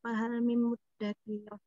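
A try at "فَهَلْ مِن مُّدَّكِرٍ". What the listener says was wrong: Muddakir, kirnya pendek ya. Fahal mim muddakir.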